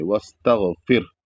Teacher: یہاں پر را جو ساکن ہے یہ پتلا ادا ہوگا یعنی باریک ہوگا کیونکہ قاعدہ ہے کہ جب را ساکن سے پہلے زیر ہوتا ہے تو اس کو باریک پڑھا جاتا ہے.